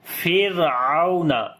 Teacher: لیکن ابھی یہاں پر را کے بعد والا حرف عین ہے جو کہ باریک ہے، اس وجہ سے را بھی باریک پڑھی جائے گی، اور واو یہاں پر لین ہے، نر پڑھیں گے تو پڑھیں گے فرعون، فیر را کو باریک کر کے پڑھیں گے.